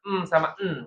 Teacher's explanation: sifat yang dia itu bunyinya melalui pangkal hidung ya atau nama lainnya apaisyum ya heeh khaisum nah sifat gunah mim sama nun itu hanya dikata M sama N ya, N na na gitu ya, Nya gitu ya.